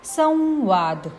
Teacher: अनुस्वाराचा उच्चार म असा होतो · यात स वरील अनुस्वारानंतर अक्षर आले आहे व, म्हणून अनुस्वाराचा उच्चार व असा होतो. संवाद. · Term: अनुनासिक व